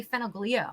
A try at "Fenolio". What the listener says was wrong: Yeah, I've been called worse, but the G is silent.